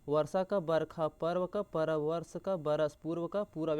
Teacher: अगला क्या बोल रहा है कि जैसे लंगटे का नंगटे, नंगा का लंगा या लंगटा। और व का प्रयोग अधिकांशतः शब्द के मध्य अंत आरंभ में ब की तरह होता है